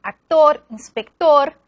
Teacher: En la combinación CT, las palabras como actor, director, inspector, el fonema se pronuncia en todos los casos como K